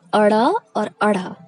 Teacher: जिह्वा का अग्र भाग यानी आगे का भाग जीभ का, वो ऊपर उठकर झटके में फेंका जाता है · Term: उत्क्षिप्त